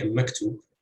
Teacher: You would have two heavy syllables, but stress would fall on the second syllable in this case.